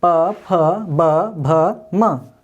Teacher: इसके उच्चारण होठों के मिलने से, ऊपरी और निचले होठ के मिलने से उच्चारित होने वाले शब्द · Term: ओष्ठ वर्ग